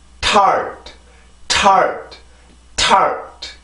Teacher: 앞에 그 음절의 시작과 음절의 끝이 같은 T 발음인데 소리의 힘에 있어서 차이가 나죠?